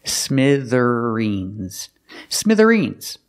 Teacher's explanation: The TH makes the voiced sound z-z, like father and mother.